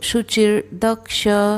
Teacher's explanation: द के ऊपर जो रफार है तो द के पहले हम र का उच्चारण करेंगे